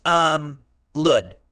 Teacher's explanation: Els word type elude is a verb it's pronounced um lud with the stress on the second syllable